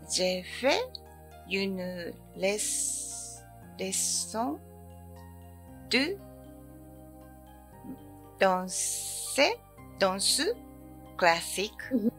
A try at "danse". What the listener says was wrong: Oui, ▁danser ▁は 発 音 ね 、 ち ょ っ と 違 い ま す ね 。 動 詞 み た い で す ね 。danser ▁は 動 詞 に な り ま す ね 。 だ け ど 、la ▁danse ▁は 名 詞 。la ▁danse。 発 音 は 違 い ま す ね 。la ▁danse。OK?